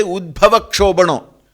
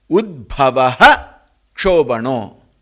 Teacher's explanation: whenever visarga is followed by ksha, then visarga is fully retained. Like for example, there we should not say udbhava kshobhano.